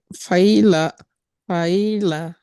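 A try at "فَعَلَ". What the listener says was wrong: পাইরা কেন হলো প্রথমটা? বা কাসরা কেন হবে? উপরে তো ফাথা তো। ফাআলা, ফাআলা।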